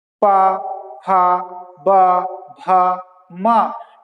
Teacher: ना आपके दांत से टकरा रही है जीभ, ना आपके तालू से टकरा रही है, ना मूर्धा से टकरा रही है, बस हवा है जो ओठ से टकराकर निकल रही है। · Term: ओष्ठ